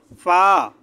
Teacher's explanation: গইন, গলার শেষ ভাগ থেকে একটু মোটা করে গইন। ফা, ফা, নিচের ঠোঁটের পেট সামনের উপরে দুই দাঁতের আগার সাথে লাগিয়ে ফা, একটু বাতাস বের হবে ফা